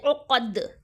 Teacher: قاف چونکہ حرف مستعلیہ ہے اس کے لیے قاف کو ہمیں پر یعنی کہ موٹا پڑھنا ہے، اوکے. دال کو ہم وقف میں ساکن کر دیں گے، کیا کر دیں گے، وقف میں ہم ساکن کر دیں، عقد، اوکے.